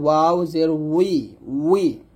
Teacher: ওয়াউট হবে দুই ঠোঁট গোল করে